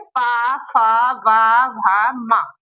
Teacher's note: ओष्ठ। होठों के द्वारा बोले जा रहे हैं।